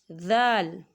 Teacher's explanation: زبان کا سرا اور اوپر کے دانتوں کے اندرونی کنارے سے ذال ادا ہوتا ہے